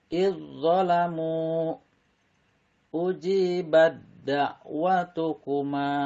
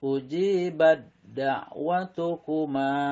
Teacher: Jadi taknya hilang, terdengar suara dal